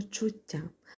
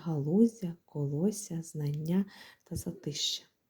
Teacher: тут іде подовження м'якої приголосної т